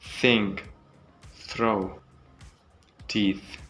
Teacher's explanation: place your tongue between your teeth slightly and let some air pass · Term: th sound